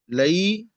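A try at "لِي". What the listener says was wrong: لئی نہیں، لی. یا ایڈ کریں گے تو آٹومیٹک لام کے نیچے زیر آ جائے گا.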